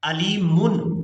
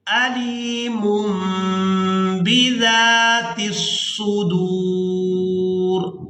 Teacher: यहाँ छोटी मीम आने की वजह यह है कि तनवीन या फिर नून साकिन के फौरन बाद जब भी बा आएगी तो वहाँ तनवीन में या नून साकिन में जो नून की आवाज़ होती है उसको मीम के साथ बदल कर अदा किया जाता है। तो यहाँ भी तनवीन में जो नून की आवाज़ है उसको हम मीम के साथ बदल कर अदा करेंगे। अलीमुन नून की आवाज़ अदा नहीं करेंगे।